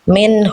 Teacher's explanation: Tadi ada nun sukun ketemu huruf ha. Tuh dibaca jelas. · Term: izhar halqi